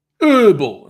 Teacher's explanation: the way Americans say herbal, and it's such a harsh pronunciation of the E, pretending the H isn't there.